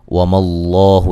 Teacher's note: لفظ اللہ کو موٹا پڑھیں گے، اس سے پہلے زبر ہے